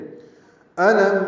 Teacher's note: حمزہ اقصی حلق سے ادا کریں گے. لام کو میم سے ملانا ہے.